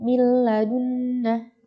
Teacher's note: Nah, tapi ini sudah paham kita walaupun tidak diberi tanda tasydid karena itu hukumnya idgham dimasukkan dan dia itu tidak berdengung, maka langsung milladunna.